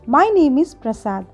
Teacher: the pitch of the voice falls at the end of the sentence · ఇంగ్లీష్లో మనం ఏవైనా statements చెప్పినప్పుడు వాటికి మనం ఫాలింగ్ టోన్ యూస్ చేయాలి. అంటే స్టేట్మెంట్ చివర మన వాయిస్ కొంచెం తగ్గించాలి.